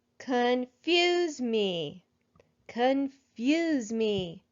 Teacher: I think I hear the accent in the word confuse in the second syllable.